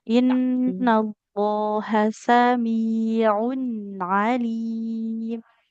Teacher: Huruf ain di wastul halqi tengah tenggorokan.